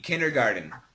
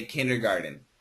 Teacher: the actual spelling is with a t but the pronunciation in America is usually with a d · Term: flat T